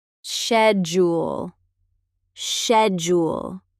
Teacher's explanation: The c h makes a sh sound in British English.